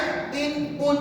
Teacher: hujung lidah ditekan ke gusi atas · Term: nun mati